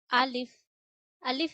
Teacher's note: अलिफ अदा होता है गले के निचले हिस्से से। यानी अलिफ पर जब ज़बर जे पेश आती है या कोई सी भी हरकत आती है आप अलिफ को हमजा पढ़ते हैं।